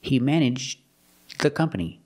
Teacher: You make a stop D, and it links together with the, so you don't really hear the D.